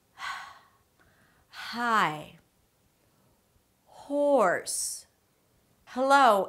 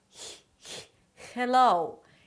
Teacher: for the H sound everything needs to be open in the back and it's like you're just whispering